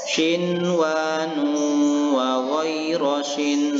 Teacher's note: membacakan Hai bunyi Nun yang berbaris sukun ini dengan jelas dan tidak berdengung atau dibaca izhar